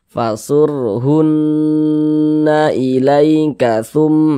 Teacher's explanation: suaranya itu kita tahan, kita dengungkan begitu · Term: gunnah musyaddadah